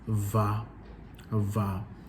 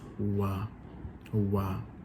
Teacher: in the Ewe it's labiodental, so you'd say va with your teeth involved, but in the Yoruba it's just wa.